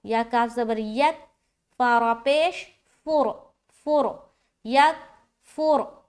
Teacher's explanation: را کو موٹا رکھیں گے